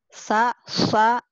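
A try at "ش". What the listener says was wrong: Udah pinter, cuman shinnya ya belum keluar ya.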